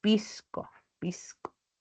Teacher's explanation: Aspiración de S como una J suave, ¿no? O sea, podemos decir pisco, pisco, una aspiración suave, una I suave.